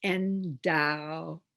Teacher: The ed at the end of endowed is not a separate syllable, despite the fact that the e is there. It's endowed.